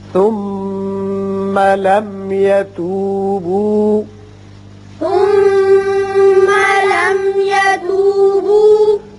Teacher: یہ میم مشدد حرف غنہ ہے یہاں غنہ کیجئے. یہ میم ساکن جو ہے یہاں اظہار شفوی ہوگا